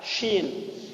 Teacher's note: kelihatan makhrajnya keluar dari wastul lisan, dari tengah-tengah lidah, karena huruf dengan huruf jim dan shin, 3 huruf di makhraj yang sama ya.